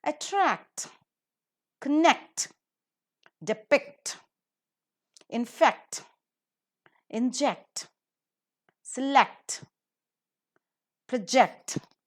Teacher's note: these words we have the words ending with c t and they are disyllabic and hence according to the rule the last syllable is accented